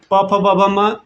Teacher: प फ ब भ म ओष्ठ से।